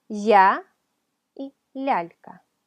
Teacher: la ya palataliza, suaviza la consonante que le precede